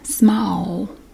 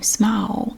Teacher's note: anytime you have an l in a word when it comes to my accent it almost sounds like a w